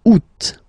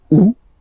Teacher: The first one, you don't pronounce the final T. Ou. Second one, you pronounce it août.